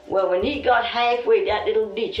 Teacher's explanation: Lumbee English speakers share vowel sounds present in the Outer Banks accent, where tide is pronounced toid.